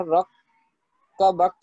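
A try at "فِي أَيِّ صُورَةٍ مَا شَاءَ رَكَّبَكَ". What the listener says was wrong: اچھا اس میں باقی آپ نے صحیح پڑھا ہے، لیکن جو را کو ہے نا لمبا کر دیا آپ نے سورہ کا، تو وہ 1 حرکت ہے. فی ای سورۃ ما شاء رکبک.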